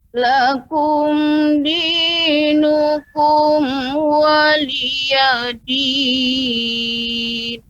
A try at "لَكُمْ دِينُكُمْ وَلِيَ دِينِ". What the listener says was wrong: Kemudian untuk pengucapan lakum, jangan sampai kita ingin membaca dengan nada, akhirnya la-nya jadi panjang Ibu. Misalnya lakum, lakum. Nah, jadi la-nya panjang. Seharusnya lakum, lakum. Yang keliru lakum, lakum.